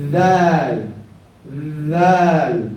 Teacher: there's like a like a little vibration with air coming out